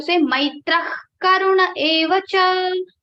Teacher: in the place of Visarga ha, you have to say kha